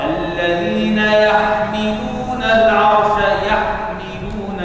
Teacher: الحاء من حروف الحلقوم والميم من الشفتين بينهما مخارج كثيرة متباعدين في المخرج. الميم من الشفتين والحاء من الحلقوم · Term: الإظهار